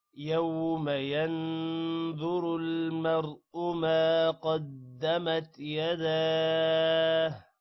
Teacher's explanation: یہاں پر وقف کریں گے تو ہو نہیں پڑھنا، صرف ہا کی آواز آخر میں لے کر آنی ہے